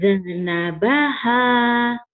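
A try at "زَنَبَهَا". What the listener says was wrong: Zanabaha. Hati-hati ya, jangan Cina bah, jangan ada E-nya ya. Kenapa jadi ada E-nya ya?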